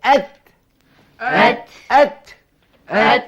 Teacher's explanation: ketika bunyi ta ini jangan pula ada bunyi huruf sin. Ada daripada orang yang kadang-kadang baca huruf dia kata tats tats erti hamas bukannya keluarkan huruf sin.